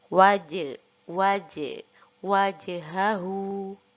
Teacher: Jadi huruf jim di sini karena berharokat sukun dan termasuk salah satu huruf qalqalah, maka harus kita baca qalqalahkan atau kita pantulkan